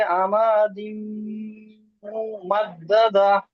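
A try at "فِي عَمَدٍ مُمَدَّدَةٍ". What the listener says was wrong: হুম আবার টান হয়ে যাচ্ছে, দেখেন আমি একবার বলছি, দেখে নেন। ফি ফি আমাদিম আমাদিম মুমাদ্দাদা। হ্যাঁ, ফি টান হবে, মিমটা গুণনা হবে। হ্যাঁ, ফিটা টান হবে, মিমটা গুণনা হবে। হ্যাঁ, এখানে তানবিনের পরে ইউমিনের মধ্যে মিম এসেছে, তাই হুম এদিগামে নাকিস হবে।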